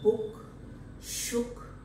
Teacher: this sound is very close to half close position it is also back and is an example of closed lip rounding here the two lips are protruded in the form of